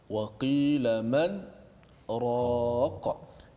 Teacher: Kalau kita perasan ayat 26, kalla idza balagatit taraqiya wa qila man, ayat 27 ada tanda sin dekat atas huruf selepas huruf man tu, nun itu menandakan itu bacaan saktah. Saktah kita berhenti seketika tanpa menarik nafas.